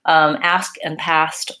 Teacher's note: it's vowel ah which is the black cat vowel and that's a front open vowel so you want to make sure you open it off ah